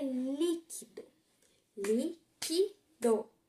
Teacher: 3 sílabas. A sílaba forte é o li. O do é a última, o que a penúltima e o li a antepenúltima.